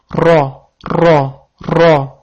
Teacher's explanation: Ya'ni bu titrovchi harf deyiladi. Sababi bu harf talaffuz qilganimizda tilimiz tepa tanglangimizga tegadi va titrab turadi. Buni o'zbek tilidagi r harfidan asosiy farqi ham shunday. · Til uchi va qisman til o'rtasi tepa tanglangimizga tegib turadi va ro deb talaffuz qilinadi.